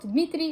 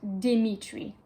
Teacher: So we would not say Dmitry in English, we would say Dimitri. So we'd add a vowel between the D and the M.